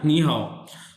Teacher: The first syllable turns into second tone. Sequence 3+3 बन जाता है 2+3।